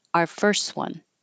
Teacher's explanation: you don't have to say this T in first if you do you can make a connection first one if